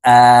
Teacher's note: এই হামজার উপরে যেহেতু খারা জবর আছে আমরা এই হামজাকে এক আলিফ টেনে পড়বো